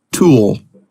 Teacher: when you make the back vowel your tongue is already pulled back so it's easier to make the dark l